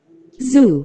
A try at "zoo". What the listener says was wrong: 주가 아니고 뭐? Zoo.